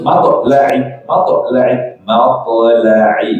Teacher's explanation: Matla'i pakai ain terus qalqalahkan to'nya. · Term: Qalqalah ringan